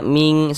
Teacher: Ming kita ini kita baca ming sehingga di bagian ming itu soalnya suaranya itu kita tahan. Ah kita panjangkan sejenak kira-kira sepanjang dua harakat kita dengungkan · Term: ikhfa hakiki